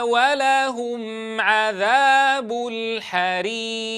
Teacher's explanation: لاحظوا إلى الواو العاطفة لا بد من ضم الشفتين عندها